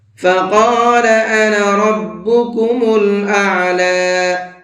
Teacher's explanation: فقال قاف کو منہ بھر کے پڑھیں گے